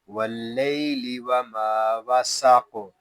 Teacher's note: وقف بالاسکان اور قاف ساکن میں کلکلا. واو لام زبر ول، قاف زبر قا، ول قا، قاف یہ حروف مستعاریہ میں سے ہے، اس کو پوری یعنی موٹا پڑھیں گے.